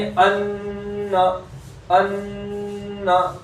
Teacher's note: एक अलिफ के बराबर गुन्ना करेंगे